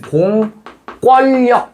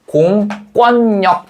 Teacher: 공권력 이렇게 발음한다고. 역시 리을 리을이 아니라 니은 니은이 남겨져 있다